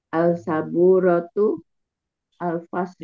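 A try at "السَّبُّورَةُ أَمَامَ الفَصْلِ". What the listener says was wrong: Belum konsisten membaca Al-Syamsiyah dan Al-Qamariyah. Itu mana yang mana yang langsung bersambung ya.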